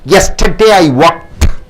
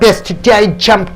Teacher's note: When adding ED, when you add ED, just add an unvoiced T.